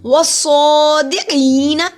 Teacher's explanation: صاد کے اوپر کھڑی زبر ایک الف کے برابر لمبا ہوگا